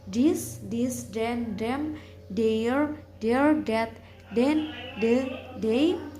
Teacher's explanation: Voice dental fricative sound